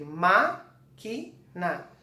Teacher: Então, o ma é a sílaba tônica, ela é proparoxítona porque o acento, a sílaba tônica dela é a antepenúltima.